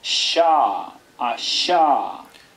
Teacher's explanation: debe hacerse no pegando la lengua a los alvéolos, a los contenedores de los dientes, a donde están metidos los dientes, sino un poco más atrás. Un poco más atrás. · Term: postal veolar fricativa